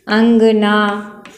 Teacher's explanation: आपके अनुस्वार की मात्रा है, नाक से ध्वनि निकल रही है ना